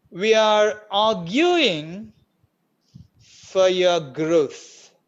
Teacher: Ra in arguing, Ra is not there in the original speech, in the native speaker speech. For your, Ra in for disappeared. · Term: tricky r,